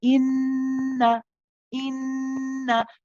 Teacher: We say inna, inna. We hold the in, but we do not prolong the na. Inna. Na is only one count at the end. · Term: noon mushaddad